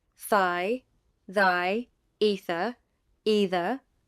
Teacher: theta is voiceless the is voiced